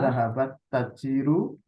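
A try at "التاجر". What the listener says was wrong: Tajiru taknya panjang.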